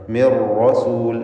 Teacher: ഒറ്റ റായിനെ തഫ്ഖീം ചെയ്തുകൊണ്ട് സ്വരഭാരത്തോടെ ഉച്ചരിക്കുക.